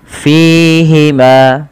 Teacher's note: Fa memiliki salah satu sifatsifat hams yang di mana Ketika melafalkannya Harus mengalirkan nafasnya dan teman-teman tidak boleh menggunakan huruf P